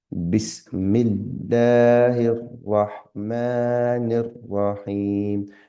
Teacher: Notice the standing fatha there. So we're elongating the sound there. Standing fatha there.